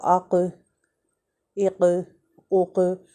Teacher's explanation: جب ہماری زبان کا یہ اصل اللسان حصہ وہ اٹھ کر نرم تالو سے اوپر لگتا ہے تو قوف ادا ہوتا ہے ، اور اس کو ہٹ کرتا ہے جیسے ایک بال ہٹ